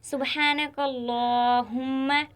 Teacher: इस पूरे जुमले में अल्लाह का लाम मोटा पढ़ा जाएगा, क्योंकि अल्लाह से पहले काफ पर ज़बर है।